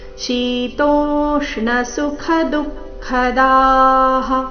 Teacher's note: ಶೀತೋ ಎರಡು ದೀರ್ಘ ತೋ ಮೇಲೆ ಆಘಾತ